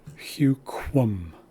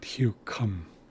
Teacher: This is a rounded K. It sounds like qua.